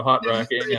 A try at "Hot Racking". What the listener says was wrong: It sounded like you said hot rocking. It's not hot rocking. Racking.